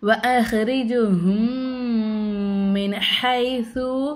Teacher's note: மீமே சாக்கினை குன்னா செஞ்சு நல்லா அழுத்தி உச்சரிக்கணும். ஏன்னா மீமுக்கு மேலே சத்து வச்சுருக்காங்க அப்படின்னால அழுத்தி உச்சரிக்கணும்.